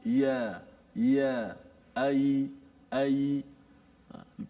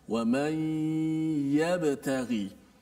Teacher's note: Menggunakan tengah lidah kita. Sama seperti kita sebut huruf shin.